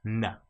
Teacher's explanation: With N, it's touching our mouth at the front, the roof of our mouth.